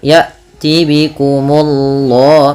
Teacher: Kemudian Allahnya tebal, ya tibikumullah, munya tipis baru Allahnya tebal